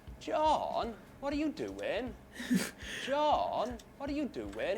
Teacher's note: Huge glide on John. · in Welsh accent, what tends to happen is that vowel sounds are stretched out and stressed, and there's a huge glide from high pitch to low pitch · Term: South Wales accent